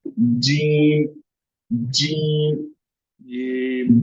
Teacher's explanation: जो हमारा middle part of the tongue है वो ऊपर टच हो रहा है माउथ रूफ पे।